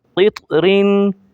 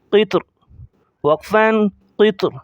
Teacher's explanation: را کی دونوں زیروں کو ظاہر نہیں کریں گے، جب رکیں گے اسٹاپ کریں گے۔ تا کو موٹا کریں گے کیونکہ یہ قلقلہ میں سے ہے، اور اسی طرح یہ جہاں لفظ ہرے آ جائیں وہاں تو ویسے ہی موٹا کرنا ہے۔